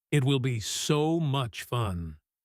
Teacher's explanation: He stretches the word so.